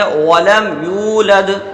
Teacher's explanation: تو یہاں پر یو ایک الف کے برابر کھینچیں گے، لد پر لام پر زبر ہے بغیر کھینچے پڑھیں گے، دال میں پھر قلقلہ ہو جائے گا